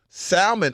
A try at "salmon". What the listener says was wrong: Pronounce the L and Sam.